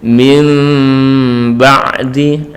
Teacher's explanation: Jadi ada rongga tipis antara dua bibir, tidak sampai menempel. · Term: iqlab